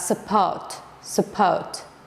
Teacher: Support sözündə deməli ikinci hecada neytral ə səsi var.